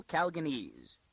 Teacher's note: She accented the second syllable and gave it a long a